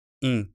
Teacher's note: the IN on the end of Iorin is not pronounced in as we would in English, but just as a nasalized vowel